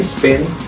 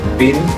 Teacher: the p in spin and pin are pronounced differently one is aspirated meaning there's a path of air and the other is not